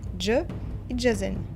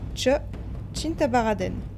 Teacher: On appelle une consonne affriquée une consonne composée de 2 consonnes prononcées directement l'une à la suite de l'autre. L'air est accumulé par la première et transféré directement pour prononcer la deuxième.